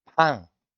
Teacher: That almost pan sounds like a pang, as in ng at the end, but with a soft G, if you listen carefully. パン、 Because again, the tongue is raising towards the back of the mouth as we say that, and it's trapping the back of the throat.